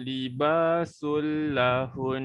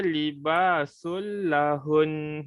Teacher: Lahun maksudnya bukan hun tapi hun, nun tu yang kita tekan dengan kadar 2 harakat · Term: dengung